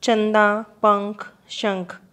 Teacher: जो अनुस्वार है इनका उच्चारण नाक से होता है और ये न या म के समान होते हैं।